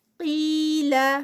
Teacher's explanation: قاف ہیوی، یہاں پر اس کی ہیوینس کم ہوگی کیونکہ یہ زیر کے ساتھ ہے، کسرہ کے ساتھ ہے، لیکن پھر بھی سٹل جو ہے وہ رہے گی.